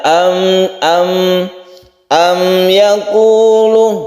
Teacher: Di dalam kita membaca mem mati atau kita sebut di sini adalah idhar syafawi. Mem itu mempunyai sifat tawassut, yaitu tidak terlalu ditekan dan tidak terlalu dilepas. Dia masih mempunyai sifat gunnah meskipun dia itu bukan tasydid tapi sedikit sekali, sehingga tidak langsung kita tekan am yaqulun, tapi itu biasa saja mengalirnya am yaqulun.